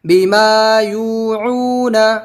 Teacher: با زیر بی میم الف زبر ما بیما یا واو پیش یو بیما یو عین واو پیش عو بیما یوعو نون زبر نا بیما یوعون بیما یوعون. اس میں با زیر بھی نہیں کھینچنا, نون زبر نا نہیں کھینچنا. باقی میم الف زبر ما اور یو عو سب کھینچنا ہے, حروف مدہ ہے.